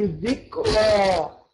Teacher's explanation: الراء إذا أتت مفتوحة تفخم